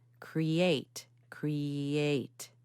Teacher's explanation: Cree is an e sound right that's a pure vowel e and then the next syllable is actually made up of a diphthong which is when you have two vowel sounds that come together